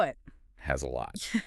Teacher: We've got the Z sound in has because it follows a vowel